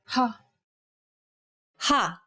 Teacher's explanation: Saying this sound involves a forceful expulsion of air. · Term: aspirated sounds